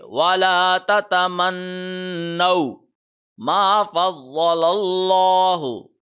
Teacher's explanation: ضاد کے اوپر آدھے سیکنڈ کے لیے ٹھہریں گے